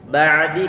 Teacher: Ba'di karena dia punya sifat bainiyah dan makhrajnya huruf ain dia di pertengahan tenggorokan.